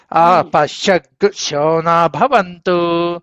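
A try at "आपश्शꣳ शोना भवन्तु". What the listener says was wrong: షగ్గు షగ్గు విడిగా చెప్పాలి అది. షగ్గు అపశ్యగ్గు అంటున్నారు మీరు ఆపశ్యగ్గు శో న భవంతు శో న భవంతు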